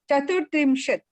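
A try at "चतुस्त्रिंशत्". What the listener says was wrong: Chatustrimshat. There is a sakara there. Chatustrimshat. Chatus. Here it is a s. Chatustrimshat.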